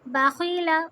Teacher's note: خا میں جب بھی ہم پڑھیں گے رگڑ کی آواز آئے گی